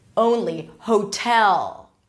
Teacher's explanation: a long vowel a changing vowel and you're transitioning from the o to the U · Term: long o